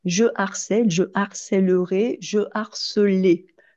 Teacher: Vous noterez qu'avec le je, il n'y a pas d'élision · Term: H aspiré